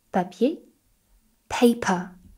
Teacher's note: If you place your hand in front of your mouth, you'll feel a lot more air when we say the English P.